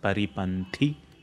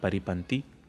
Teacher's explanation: Even the tha is a Mahaprana sound. Paripanthi, not paripanthi.